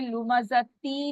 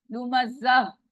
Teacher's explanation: जब हम रुकते हैं तो गोल ता जहां पे भी होगी वो हाँ में चेंज हो जाती है